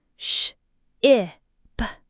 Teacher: For this short I sound, your tongue is still relatively high and front, but it's slightly lower and more relaxed, a bit farther back than for E. Your lips are also more relaxed, neutral.